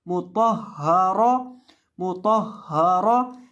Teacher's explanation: रॉ के ऊपर जबर पढ़ेंगे और रॉ को मोटा करके पढ़ेंगे क्योंकि रॉ के ऊपर जब जबर या पेश होती है तो रॉ को मोटा किया जाता है।